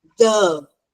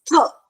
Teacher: When you feel a vibration, This is called your voiced TH.